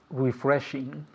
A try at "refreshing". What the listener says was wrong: And I want to hear that G. With the G at the end.